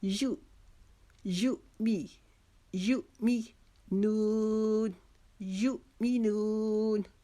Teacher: یو جو ہے اس کو جھٹکے کے ساتھ پڑھیں گے کیونکہ یہ جو یو کے اوپر چھوٹی عین کی شکل کا حمزہ ہے وہ ساکن ہو گیا، یعنی کہ اس کے اوپر جزم آ گئی ہے. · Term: جھٹکا